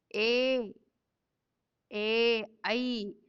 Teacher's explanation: ಕಂಠ ಮತ್ತು ದವಡೆ ಕಂಠ ತಾಲ್ಯ ಅಂತ ಕರೀತಾರ್ರಿ.